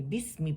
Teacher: آپ نے بسمی با کسرہ کے ساتھ پڑھنے، بے نہیں پڑھنی، اور می پڑھنی ہے، ٹھیک ہے؟ میں نہیں پڑھنی، بسمی پڑھنی ہے۔